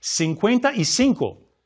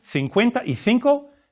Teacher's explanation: Perhaps the most notable difference in accent among Spanish speakers relates to the way to pronounce the letter Z and the letter C followed by E or I. In Latin America, the letter Z and the letter combination CE and CI are pronounced with a S sound, while in northern and central Spain, this is pronounced with a Th sound. So, the number 55, for example, would be 55 in Latin America and 55 in northern and central Spain.